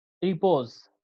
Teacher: one unstressed syllable followed by one stressed syllable. For example, repose, देखा जाए तो first पे स्ट्रेस नहीं है और सेकंड वन पे स्ट्रेस्ड है। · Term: आम्बिक पैटर्न